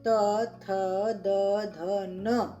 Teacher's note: त वर्ग में त, थ, द, ध, न ये अक्षर होते हैं, ये वर्ण होते हैं। इनको हम दंत स्थान से उच्चारण करते हैं। दंत स्थान यानी कि दांत लगते हैं इनको बोलने में